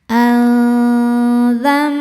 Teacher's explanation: La yusalu berikutnya ada hukum ikhfa hakiki ausat karena nun sukun bertemu huruf dalal. Cara bacanya nun sukun disamarkan ke dzal disertai bunyi dengungan. Dengung dan samarnya sama besar.